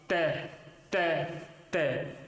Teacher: ऊपर के दांतों के अंदर की तरफ जीवा स्पर्श करेगी। जैसे तय बोलो आप, तय तय तय, तो देखा आपने कि ऊपर के दांतों के अंदर की तरफ जीवा वो स्पर्श करती है और जीवा के सारे श्वास वायु चलती है।